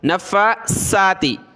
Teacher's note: یہ سا ہے سا، اس میں زبان نکالی جاتی ہے اور اس میں سیٹی کی آواز نہیں آتی، ٹھیک ہے. سین میں سیٹی کی آواز آتی ہے